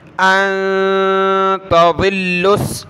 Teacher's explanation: نون ساکن ہے، ناک میں آواز پیدا کریں گے. أَن تَضِلُّوا، تا زبر تا، ضاد لام زیر ظل، لام سین پیش لس.